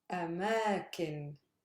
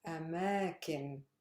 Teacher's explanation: My stress lies on the middle one, which is heavy.